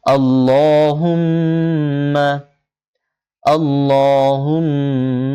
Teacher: হুম মিম সাকিনের উপরে তাসদিদ হয়েছে, গুণনাও করতে হবে।